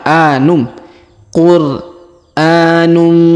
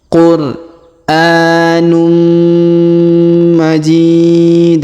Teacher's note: huruf tanwin un bertemu dengan mim bertasdid, maka tanwin unnya melebur ke huruf mim bertasdid ya, jadi berubah menjadi mim ya.